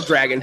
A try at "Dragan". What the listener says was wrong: It's first of all not Dragon because it's with an A in the end, not with an O, which would be Dragon. smart ass, but his name is Dragan.